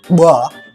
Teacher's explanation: produced with a glottalic ingressive mechanism, which means that we have to suck the air inwards a bit at the beginning to articulate these sounds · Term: bilabial implosive